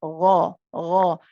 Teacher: The ghain, of course, is heavy. It's from the top of the throat.